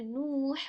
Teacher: واو مدہ آ گئی ہے تو واو مدہ سے پہلے پیش ہے، ہم کھینچ رہے ہیں